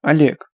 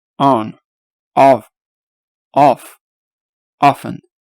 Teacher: Как могли заметить, тут не А и не буква О. Что-то между ними. Хотя 70% все же похож на нашу О. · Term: большая О